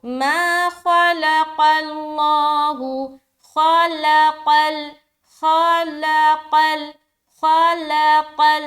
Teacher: یہاں پر دیکھیں خا کو موٹا، لام کو باریک، قاف کو لام سے ملاتے ہو، قاف بھی موٹا اور لام بھی موٹا